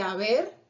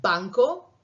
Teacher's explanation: En el caso de haber, esa B es un poquito más suave que en el caso de banco, y por eso tiene un símbolo diferente.